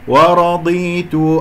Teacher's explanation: الضاد هنا مفخمة مرتبة أخيرة لأنها مكسورة خامسة يعني، والراء مفخمة لأنها مفتوحة